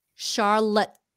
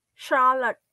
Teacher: It's a stopped T.